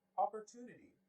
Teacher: syllable two in opportunity is deemed more important